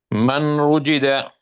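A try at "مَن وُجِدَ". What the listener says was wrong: All right, we skip the noon, remember? We're gonna be skipping the noon here. And we're gonna make this wow with a gun sound.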